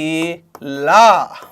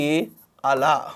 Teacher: ఏం పక్కలు అంటే ఏం లేదండి, నాలుక ఉంటుంది కదా, నాలుక యొక్క పక్కలు. జిహ్వ యొక్క ఇరు పార్శ్వాల నుండి శ్వాస నిర్గమించుట చేత జరిగేటువంటి ప్రయత్నాన్ని ఏమంటామనంటే పార్శ్విక ప్రయత్నం అని అంటాం